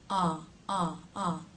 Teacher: This vowel sound has more jaw drop, ah, than any other vowel in American English, so make sure you're really getting a nice drop there. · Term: ah as in father